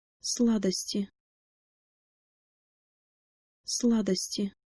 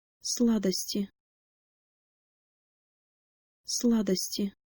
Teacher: is soft because it is followed by the vowel e so make sure to put the middle of your tongue by the roof of your mouth and the tip of your tongue by your lower teeth